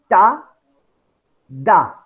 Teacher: when you pronounce ta your tip of your tongue touches alveolar Ridge you you stop the air to flow in the beginning right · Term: plosives or stops